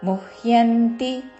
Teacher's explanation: ము పక్కన హ కి యవత్తు ముహ్ అని పొల్లు హ తో ముందు పలికి తర్వాత యంతి